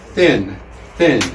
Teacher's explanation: And then you push the sound through, and that's called a dental sound. You make it with your teeth. · And you'll notice that your tongue touches your teeth. Okay. And then you push the sound through, and that's called a dental sound.